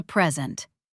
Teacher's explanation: This is a present. Stress on which syllable? Answer: first syllable. Present, noun.